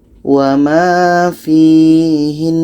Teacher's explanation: Seterusnya pada ayat 120 di sini ada nun tasydid. Nun tasydid ketika berhenti tetap kita baca dengungnya.